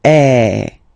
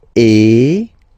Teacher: the sound is really open, and normally your mouth should be opened a little bit more than with the accent aigu as well. Okay, so it goes like eh. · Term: accent grave